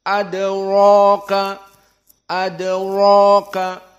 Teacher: Dan ra tafkhim yang lebih kental karena dia fathah dan mat tabi'i jadi panjang.